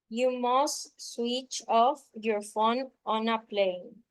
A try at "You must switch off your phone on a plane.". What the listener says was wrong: Ok, eso estuvo muy pausado. Let's repeat. You must switch off. Switch off your phone on a plane.